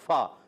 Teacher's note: ऊपर वाले दांतों के किनारे जब नीचे वाले होंठ के तर हिस्से से लगते हैं तो अदा होता है